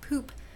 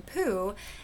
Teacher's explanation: is that we seem to be missing that final consonants a final consonant deletion can cause poop to become poo